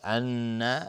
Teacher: ان مشدد است، نون مشدد دو حرکت غنه میدیم